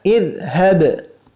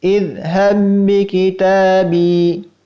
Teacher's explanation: Demikian pula pada baris yang terakhir pada kata idhhab. Jika kita baca secara terpisah, maka kita mengucapkannya dengan qalqalah karena ba adalah huruf qalqalah. Seharusnya kita baca idhhab. · Seharusnya kita baca idhhab. Namun karena terjadi proses idgham, karena bertemu dengan huruf ba yang berharokat setelahnya, maka qalqalahnya menjadi hilang. Sehingga kita baca idhhab bi kitabi.